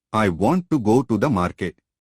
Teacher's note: Notice how the stressed syllables I, go, mar are evenly spaced in time. The unstressed words want to the are said more quickly.